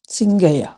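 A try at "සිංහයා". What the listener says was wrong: சிங்ஹயா, சிங்ஹயா, சிங்கயா இல்ல சிங்ஹயா. சிங்ஹயா, சிங்ஹயா.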